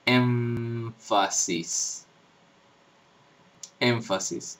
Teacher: con el labio inferior contra los dientes superiores contra los dientes de arriba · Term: como una m dental